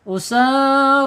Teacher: Usar sinnya panjang dua harakat, roya panjang dua harakat.